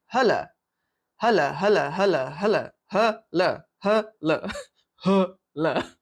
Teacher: We sort of just leave out the one L. The faster we speak, the more we tend to not pronounce both L's. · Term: just a single L